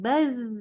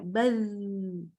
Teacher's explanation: Dan baca sukunnya itu lembut ya, baz, nggak berhenti.